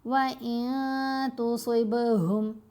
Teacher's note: با پر کلکلا کرنا ہے، صاد کو موٹا پڑھنا ہے